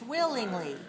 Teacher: Stress on the first syllable